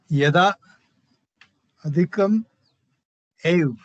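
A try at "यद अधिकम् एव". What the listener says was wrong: No, you're doing halant, sir. Don't do halant. Eva. Yada plus Eva.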